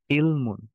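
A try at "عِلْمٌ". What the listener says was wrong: হ্যাঁ, আইনের উচ্চারণটা আরেকটু ভেতর থেকে হলে মনে হয় আরো সুন্দর শোনাতো। ইলমুন। ইলমুন। তো এই কণ্ঠের ভেতর থেকে চাপ দিয়ে আমরা উচ্চারণ করব।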